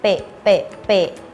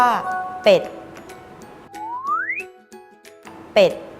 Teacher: ให้เหยียดริมฝีปากพร้อมทั้งให้ริมฝีปากบนและล่างปิดชิดกัน และเปล่งเสียงเปะเปะเปะพร้อมพูดว่าเป็ด▁เป็ด▁คำที่ขึ้นต้นด้วยเสียง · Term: ปอปลา